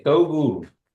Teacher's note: Kiowas don't have an L sound. But when it comes out, it almost comes out like a D, almost a D.